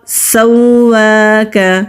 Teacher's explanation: سین سٹی والے حروف میں سے ہے, ہلکی سی سٹی کی آواز آتی ہے, واو کے اوپر کھڑی زبر ہے اور تشدید بھی ہے, مضبوطی بھی دیں گے اور ایک الف کے برابر کھینچ کر بھی پڑھیں گے.